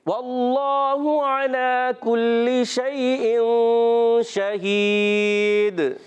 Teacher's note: کلی، کاف کو باریک، لام کی زیر کو کھینچنا نہیں ہے